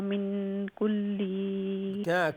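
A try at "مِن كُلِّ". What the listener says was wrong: لام لمبا نہیں ہے.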